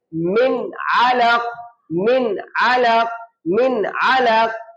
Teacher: آپ نے آواز کو نہ ناک میں لے جانا ہے اور نہ چھپانا ہے · اب نون ساکن کے بعد یہ حروف حلقی میں سے عین آ گیا. اب اس عین کے آنے کی وجہ سے آپ نے آواز کو چھپانا نہیں ہے, بلکہ آپ نے آواز کو ظاہر کرنا ہے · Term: اظہار